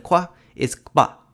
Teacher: These are labial velar plosives, which are comprised of ka and pa or ga and ba together.